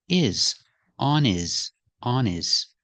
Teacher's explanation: the word his is not a stressed word so the H is silent